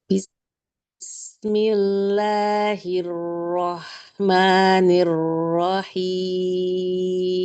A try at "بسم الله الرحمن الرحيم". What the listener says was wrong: Ya, Rahim jangan diangkat rohnya. Bismillahirrahmanirrahim.